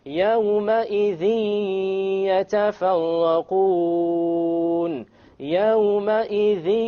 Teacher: there's a ghunnah. Okay, and there is no clear end sound.